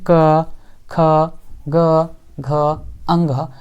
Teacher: क से लेकर के अंग तक है, वो किस चीज़ से बोली जाती है? तो बिल्कुल कंठ से बोली जाती है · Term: क वर्ग